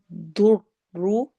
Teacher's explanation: ضاد اور را کو موٹا پڑھنا ہے